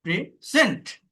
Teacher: second সিলেবালে যদি stress দেন, প্রেজেন্ট, প্রদান করা